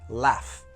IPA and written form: læf (laugh)